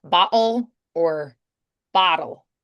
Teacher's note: So the T's become more of a D there.